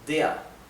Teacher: la er en alemán cuando está al final de una palabra en vez de pronunciarse se pronuncia ea